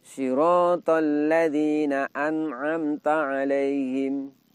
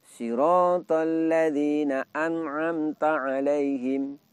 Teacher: Di mana bunyi nun mati atau tanwin di sini terdengar jelas dikarenakan hanya boleh didengungkan sedikit saja.